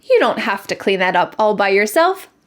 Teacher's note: The words have to become hafta in American English.